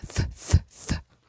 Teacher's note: touch your throat and make the sound th thth you will not feel vibration